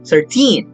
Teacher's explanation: numbers ending in teen show a rhythmic shift in stress from the first syllable to the last